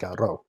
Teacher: If you want to put real feeling into a word, if you want to emphasize something, then you can roll it especially hard, but it's just a flick against the top of your mouth rather than the r, which we get in English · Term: rolled